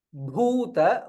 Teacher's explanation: Bhuta, bhu is mahaprana and dirgha.